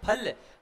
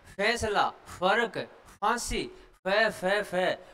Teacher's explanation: फल जो होता है ना वो ओष्ठ्य होता है, लेकिन हम जब बोलेंगे ना फैसला, फर्क, फांसी, फै फै फै, तो ये फै जो होता है वो दंतोष्ठ्य होता है